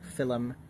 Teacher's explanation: In a lot of Irish words, you will pronounce two consonants that are next to each other separately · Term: epenthesis